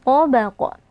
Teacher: nun sukunnya kita baca dengan samar dan berdengung, lalu kita tebalkan ya karena di sini ikhfa yang bertemu dengan huruf tebal. Jadi kita angkat pangkal lidah. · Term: ikhfa hakiki